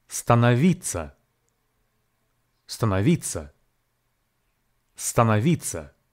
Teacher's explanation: No is pronounced as na, and two final syllables vitsya are actually pronounced as vitsa · This word has four syllables: sta, no, vitsya, and the stress falls on the penultimate third syllable